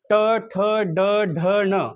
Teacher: जीभ तुम्हाला मूर्धेला लावावी लागते